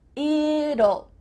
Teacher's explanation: What is happening with this contraction? Well, when we say the contraction it will, we kind of add a little U sound before the L. It kind of sounds like U-L-L.